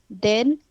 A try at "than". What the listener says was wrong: No, don't pronounce then.